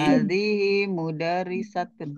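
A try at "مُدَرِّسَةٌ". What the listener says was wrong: mudar gitu Bu. Jangan mudarisat, mudar gitu. mudarrisatun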